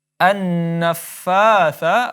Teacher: fa dibaca 2 harakat karena mad tabi'i